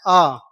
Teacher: याद रखिएगा ऐसा स्वर जिसके उच्चारण के लिए हमें जीभ के मध्य हिस्से का प्रयोग करना पड़े उसको मध्य स्वर कहेंगे और ऐसा स्वर एक ही है और वो है अ कौन है जी अ बोल के देखिए ना तो जीभ का आगे वाला हिस्सा ना जीभ का पीछे वाला हिस्सा यह आपका बीच वाला हिस्सा इसमें प्रयोग होता है